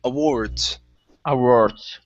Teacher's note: the stress is at the very end